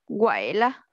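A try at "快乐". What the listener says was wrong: Thân tư, cao lên một tí.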